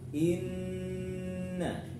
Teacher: inna gunnah musyaddadah ya, wajib dengung